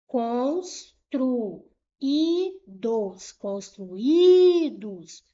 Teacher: Última, penúltima sílaba foi a mais forte. Eu tenho aqui uma palavra paroxítona.